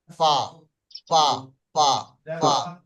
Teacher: তো উপরের ঠোঁট, উপরের দুই দাঁত এবং নিচের ঠোঁটের ভিজে অংশ মিলিয়ে উচ্চারিত হয় ফা